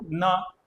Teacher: ये जीभ आपके ऊपर के दांतों के अंदर जो मसूड़ा है ना उसको टच करिए